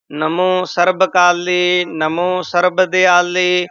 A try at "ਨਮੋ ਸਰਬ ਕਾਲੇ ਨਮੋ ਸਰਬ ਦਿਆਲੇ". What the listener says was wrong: ਨਨੇ ਤੇ ਮਮੇ ਦੇ ਵਿੱਚ ਸਪੇਸ ਦੇ ਕੇ ਨਹੀਂ ਬੋਲਣਾ